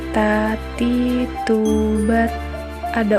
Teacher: menyentuh ujung lidah dengan gusi gigi seri bagian atas dengan mengalirkan sedikit nafas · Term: huruf ta